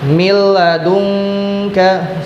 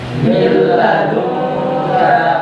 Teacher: Maka apabila terjadi hukum bacaan idgham bila gunah, cara yang membacanya adalah dimasukkan arti dari idgham ya. Suara nun mati atau tanwin dimasukkan kemudian tidak didengungkan.